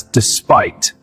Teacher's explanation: Stress on second syllable.